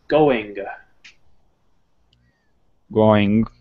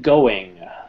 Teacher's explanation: almost as though the g isn't there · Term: very very soft g